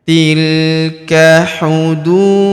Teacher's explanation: huruf du kita panjangkan dua harakat karena terdapat wau sukun di depannya